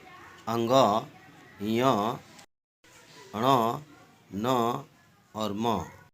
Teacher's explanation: अनुनासिक वर्ण इसलिए कहा जाता है कि इनको उच्चारण करने में नाक का प्रयोग होता है